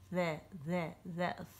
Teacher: ان حروف کا جو لقب ہے وہ حروف لثویہ ہے، کیونکہ عربی زبان میں مسوڑوں کو لثہ کہتے ہیں اور یہ حروف لثہ کے قریب سے ادا ہوتے ہیں